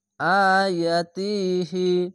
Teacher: খাড়া যাওয়ার 1 আলিফ টেনে পড়বেন